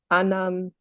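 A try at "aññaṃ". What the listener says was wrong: It's anyam. You're making the reverse error that Shalika made. It was uppanna, but Shalika said uppanya, but this genuinely is anya.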